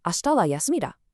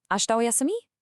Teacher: Instead, you drop it entirely from the predicate. Just state the noun and use a rising intonation at the end of the word.